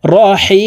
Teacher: হি এখানে 3 আলিফ টেনে মিমকে সাকিন করতে হবে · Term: মধ্যে আরজি